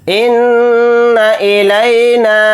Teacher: نون کے اوپر تشدید ہے تو یہاں پر غنہ کر کے پڑھیں گے